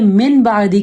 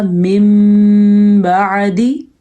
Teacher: جب نون ساکن کے بعد با آیا ہے تو اس نون ساکن کو ہم میم میں بدل دیں گے، تو یہ من بعدی کے بجائے پڑھا جائے گا من بعدی.